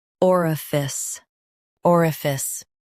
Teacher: Stress or and keep fice light